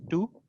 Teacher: there's no off glide at the end